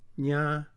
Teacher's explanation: A is the nasal vowel. Although we don't mark this vowel as nasal, it is nasal because a nasal consonant precedes it.